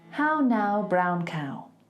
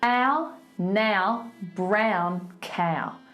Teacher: It travels from like a nasal sound down to the oral cavity